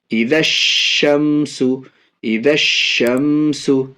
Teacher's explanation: الف اور لام دونوں کو نہیں پڑھیں گے، بعد والے حروف یعنی شین سے ملا کر کے پڑھیں گے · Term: حروف شمشی